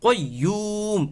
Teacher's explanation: মদের হরফ ওয়াও এর পরে মিমের মধ্যে আমরা ওয়াকফু করেছি যার কারণে এখানে তিন আলিফ পরিমাণ টান হয়ে যাবে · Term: মদ্দে আরজি